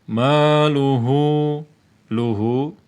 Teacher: Maluhu, ma fathah bertemu alif. Fathah bertemu alif berarti mad tabi'i. Ya, mad tabi'i ini panjang 2 harakat.